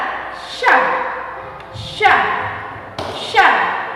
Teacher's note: pada huruf sya dilapaskan dengan mempertemukan lidah bagian tengah dengan langit-langit atas.